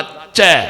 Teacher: നാവ് അണ്ണാക്ക് പറ്റിച്ചാൽ കിട്ടുന്ന അക്ഷരം അച്ഛ